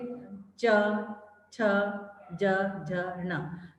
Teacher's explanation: दूसरी जो लाइन है इसमें तालु से टकराकर जो है वायु बाहर आती है, सीधी बाहर नहीं आती। तो जीभ जो है हमारी तालु से टकराती है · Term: तालवे व्यंजन